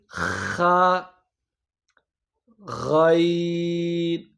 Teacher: آپ کے حلق کا درمیانی حصہ، اس سے خا غین، جہاں سے آپ کو یہ کھردرا پن محسوس ہوتا ہے، یہاں سے خا غین یہ ادا ہوتے ہیں.